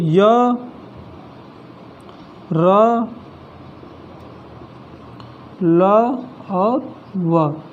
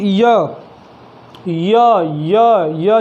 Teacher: जो हमारी जिह्वा है मुख के किसी भी भाग को पूर्णतः स्पर्श नहीं करती है, उसे अंतस्थ व्यंजन कहते हैं।